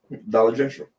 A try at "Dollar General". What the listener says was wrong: There ain't no T in general. There ain't no T in that.